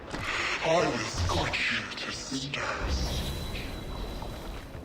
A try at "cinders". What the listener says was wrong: You can't quite pronounce cinders correctly. It sounds like you're saying sisters.